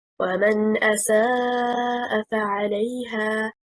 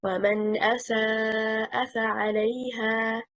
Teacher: The correct performance, stressing on حركة السين of the word.